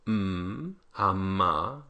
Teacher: We have the voiced bilabial nasal